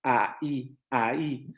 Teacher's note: cortamos o interrumpimos el momento articulatorio por esa rotura silábica que le ponemos ahí cuando generamos el hiato